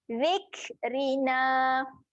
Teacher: kaf mati sifatnya kena keluar angin. Okey, keluarkan angin.